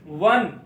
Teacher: अब ये हा आ गया नून साकिन के बाद, तो जब इजहार का कायदा लगता है तो इसमें गुन्ना नहीं करते, इसलिए यहां पर नून साकिन में गुन्ना नहीं होगा।